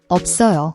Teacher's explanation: It's pronounced like a soft, unreleased P sound, where your lips close but no air is pushed out, before linking to the tense sound.